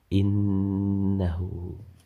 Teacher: hukum bacaannya adalah hunnah, sebab huruf nun bertasydid. Cara membacanya, huruf nun dibaca mendengung.